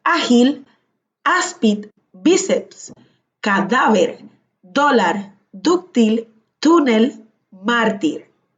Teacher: Las palabras llanas, que también se les conoce como graves, son las palabras que llevan la mayor fuerza de la voz en la penúltima sílaba